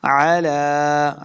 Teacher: عین کو تلفظ سے پڑھنا ہے، لام کے اوپر کھڑی زبر اور مد ہے تو ہم نے اس کو لمبا کر کے پڑھنا ہے